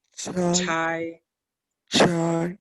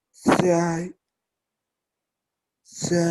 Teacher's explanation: con la CH ahora expulsa más aire con esta que con la ZH